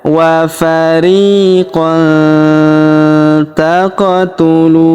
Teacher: Maka tanwin an huruf qannya melebur masuk ke huruf ta. Kita baca dengung dan samar. Dengungnya kita tahan dua sampai tiga harakat. Alifnya di sini tidak dibaca ya.